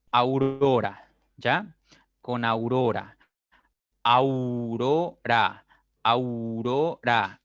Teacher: tus labios se cierran un poco cuando pronuncias ya la U. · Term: diptongo decreciente